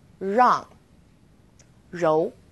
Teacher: We also have R as in rang or rou. It's quite similar to the R sound in run, but the R is a little softer. So try moving your tongue more to the back of your mouth.